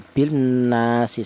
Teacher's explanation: cara bacanya lam matinya ini langsung menyatu ke huruf nun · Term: idgham syamsiyah